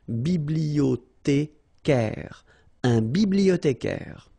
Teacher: remember in French the H doesn't exist, so you don't pronounce it